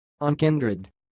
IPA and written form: ʌnˈkaɪndrɪd (unkindred)